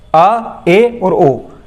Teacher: ये जो तीन स्वर हैं ये जब आप बोलते हो तो अर्ध विवृत के अंतर्गत आते हैं।